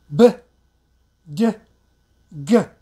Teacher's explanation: the last three is voiced explosive sound like b d g